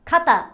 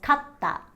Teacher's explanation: the only thing that's really separating them is the small tsu which helps to create the staccato sound between ka and ta